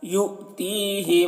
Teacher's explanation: हमज़ा साकिना है तो झटका लगाकर पढ़ेंगे और ती को खींचेंगे, या मद्दा है यहाँ पर।